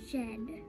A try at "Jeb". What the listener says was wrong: Pretty close. That's a B. Try again.